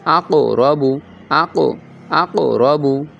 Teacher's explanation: এই কফটা কিন্তু হরফে মুস্তালিয়ার হরফ এজন্য এটার কলকলা হবে কি উপর দিকে উর্ধমুখী